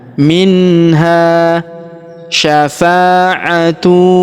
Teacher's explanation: Kemudian huruf ha kita panjangkan dua harakat karena alif di depannya.